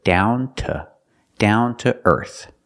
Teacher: The to is pronounced t because it's not stressed.